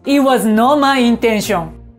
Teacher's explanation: T▁が両方とも落ちて聞こえるのはこのリダクションが発生してるからです